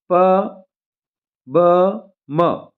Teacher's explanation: ओष्ठ मतलब ओंठ के साथ जिसका उच्चारण हो वो व्यंजन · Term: ओष्ठ व्यंजन